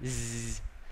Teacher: Z cũng rung rất là mạnh, nó là hữu thanh.